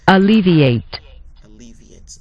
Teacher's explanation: the middle syllable Lee is going to be emphasized